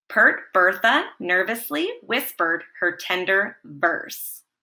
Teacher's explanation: or a pair of vowels that's followed by the letter r the r slightly changes the sound of the vowel so that it sounds neither short nor long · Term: bossy r